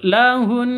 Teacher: tasydid gunna cara cara ini kan dibaca berhenti atau waqaf ya Kalau berhenti maka cara bacanya suara Hun itu Ditekan dan ditahan sampai dua ketuk dua harakat karena gunah musyad musyaddadah H lahun seperti itu hunna libasunakum Wa